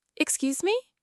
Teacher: a simple, polite, excuse me? With a rising intonation